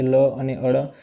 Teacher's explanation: પાર્શ્વિક વ્યંજન એટલે જીભની બંને બાજુથી હવા નીકળે લ અને અળ. લને કેવું કહેવાય છે તો ઊંધા નળિયા જેવો જીભનો આકાર.